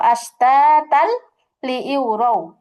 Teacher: এখানে কিন্তু আমি গুণনা ছাড়া জাস্ট মিলিয়ে পড়েছি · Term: ইদগাম